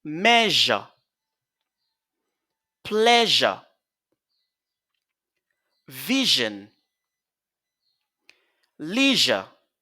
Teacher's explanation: Donc, un son de consonne voisée. Donc, une consonne fricative voisée ou une consonne fricative sonore.